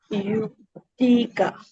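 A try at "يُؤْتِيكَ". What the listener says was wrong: यू तुई का 2 counts लिखे यहाँ, यू तुई का।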